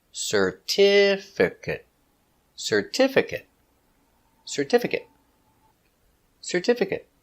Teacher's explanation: four syllables stress the second syllable